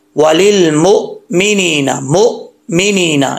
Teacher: हमज़ा जो है झटके के साथ पढ़ा जाता है और आवाज़ जम जाए